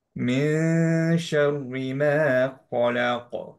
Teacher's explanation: শায়ের মাখরাজের কাছাকাছি টাচ করব না, টাংটা রুফে টাচ করবে না। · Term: ইখফা